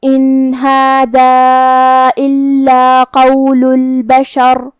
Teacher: یہاں راء کا حکم ہے تفخیم کیونکہ اس پہ ہوا جزم، لیکن اس سے پہلے والے حرف پہ مطلب شین پہ زبر ہے، تو ہمیں راء کو موٹی آواز میں پڑھنا ہے. · سین حروف الترقیق میں سے ہے، تو ہم یہ حرف کو پتلی آواز میں پڑھیں گے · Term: حرف السین